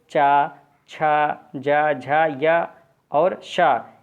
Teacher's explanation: जिन व्यंजनों में जिह्वा का अग्रभाग कठोर तालु को स्पर्श करता है उन्हें तालव्य व्यंजन कहते हैं।